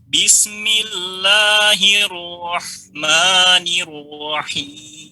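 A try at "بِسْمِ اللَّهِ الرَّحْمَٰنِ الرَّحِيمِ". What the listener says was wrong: Baik, ma-nya jangan tapi ma. Ma kan jelas. Ya, ma. Sinnya juga tadi nggak ngalir ya. Alirkan. Bismillahirrahmanirrahim. Ya, dia dialirkan tidak ditekan sekali.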